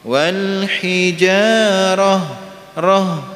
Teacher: dijaga untuk pendek nggih, karena memang rohnya pendek, nah, tidak terbawa pada lahjah Jawa. Lahjah Jawa itu, orang Jawa itu seneng kalau akhirnya dipanjang gitu nggih.